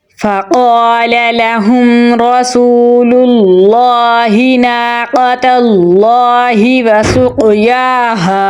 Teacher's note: قاف حروف قلقلہ میں سے ہے تو اس پر ہم قلقلہ کریں گے